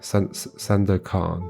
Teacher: With emphasis on the last syllable, kan.